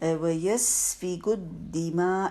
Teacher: یہاں پہ دیکھیے وَيَسْفِكُ الدِّمَاء، ایک تو سین ساکن ہے، اچھا سا ٹائم دیں گے، شارپ ایسے سیٹی کسی آواز ہوگی